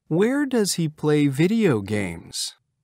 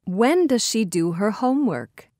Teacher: Notice the falling intonation at the end of WH questions.